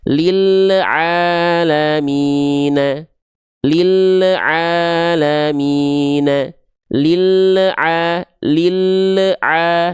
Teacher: ada bunyi le di sana, tandanya lam teman-teman memantul. Ya, gak boleh memantul, tapi lil alamina. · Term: lam sukun yang memantul